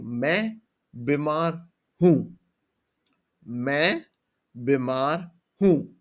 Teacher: The one you saying who. You will hear that I have a little bit of a nasal sound like a h at the end. That's kind of important.